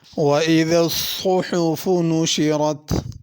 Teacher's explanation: صحف میں صاد کو پر کر کے پڑھنا، سین یا ثا نہیں پڑھنا